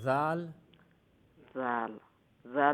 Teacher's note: জাল হইল জিফরার আগা সামনের উপরের দাঁতর আগার লগে লাগাইলে জাল